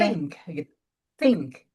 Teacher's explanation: TH-nya itu udaranya keluar banget ya